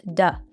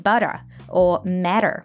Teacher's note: when we have a T surrounded by two vowels in American English, it morphs into a soft D sound.